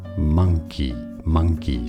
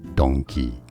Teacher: the difference of the ang sound for monkey versus the ong sound for the donkey